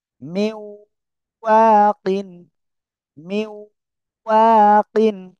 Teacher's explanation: নুন সাকিনের পরে ওয়াও আসছে, আমরা কি করব, গুন্নার সাথে মিলিয়ে পড়বো। মিউ, মিম, ওয়াও জের, মিউ, ওয়াও আলিফ জবর ওয়া, কফ দুই জের কিন, মিউ ওয়াকিন, মিউ ওয়াকিন।